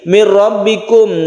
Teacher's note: bahas sebentar lagi mirbikum Nun bertemu dengan ro idgham bila ghunna bila ghunna artinya tidak berdengung nunnya menjadi hilang kita langsung tasdid dengan ro